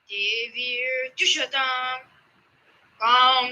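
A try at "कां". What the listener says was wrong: No, Kam Anudata.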